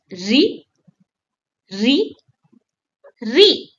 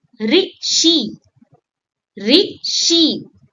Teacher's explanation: It's a short, crisp re like the start of rhythm. And you have to curl your tongue gently for it. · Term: The vowel re